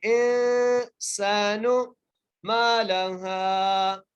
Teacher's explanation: میم کو ایک الف کی مقدار کھینچ کے پڑھنا ہے، لام کو بغیر کھینچے، ہا کو ایک الف کی مقدار کھینچ کے پڑھنا ہے۔